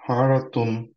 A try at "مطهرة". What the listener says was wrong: র এর সময় একটু রাউন্ড হয়ে গেছে।